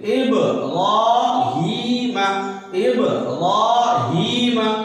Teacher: یا ساکن سے پہلے ہا کے نیچے زیر ہے اس لیے اس کو تھوڑا کھینچیں گے